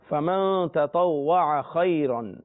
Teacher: نون پر غنہ کرنا ہے، آگے حروف اخفا میں سے تا ہے